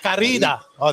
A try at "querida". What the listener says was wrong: You gotta roll your tongue a little bit.